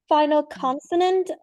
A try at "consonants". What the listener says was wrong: You don't use your S sound enough. Have you noticed that? Because you said the final consonant R, and it should have been consonants,